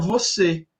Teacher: nossa vogal aqui de Minas é uma vogal mais fechada